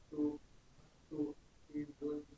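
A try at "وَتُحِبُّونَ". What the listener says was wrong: perhatikan watuhi. Jangan langsung masukkan nanya, dibaca dulu panjangnya. Watuhibbuna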